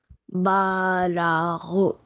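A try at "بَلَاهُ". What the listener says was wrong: Okay, lam will not be stretched.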